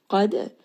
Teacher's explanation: Qad, qaf here is heavy. Dal has qalqala. It is part of qutub jad, meaning that it is going to have a bounce when we say this letter with sukun.